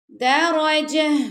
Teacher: تا کو ہم نے ساکن کر دی تو جب ہم گول تا پہ ہم سٹاپ کرتے تو وہ گول ہا کی آواز آتی ہے جو گلے کے آخری حصے سے ہوتی ہے. درجہ را کو پر پڑھنا آپ نے، باقی دال اور جیم کو آپ نے باریک پڑھنا ہے.